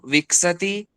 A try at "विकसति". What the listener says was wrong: पश्यतु अत्र विकसति, अत्रापि दोषाः भवन्ति। विकसति, क पूरा बोलना है, क अर्धं नास्ति, विकसति न, विकसति।